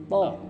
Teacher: Kalau to itu lidahnya paling depan tuh dilipat, dikenain ke gusi gigi atas, dilipat dikenain.